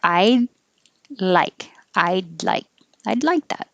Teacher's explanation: your tongue goes to the d position so you don't release it i do like hold it there i like i'd like i'd